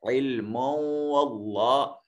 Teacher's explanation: علم میں میم کو ادا کیا جائے گا، میم کی حرکت کو وقف کی صورت میں نہیں پڑھا جائے گا، اور اگر ملا کر پڑھنا ہے تو میم کے اوپر تنوین ہے اور تنوین کے بعد حروف یرملون ہے، تو پھر یہ ادغام بالغنہ کر کے علم واللہ اس طرح کر کے پڑھیں گے اس کو۔ واللہ میں اس میں جلالت کا ما قبل مفتوح ہے، اس وجہ سے اس کو موٹا اور پر کر کے پڑھا جائے گا۔